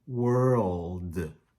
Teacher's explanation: our tongue drops down for the L, and then comes back up to hit for the D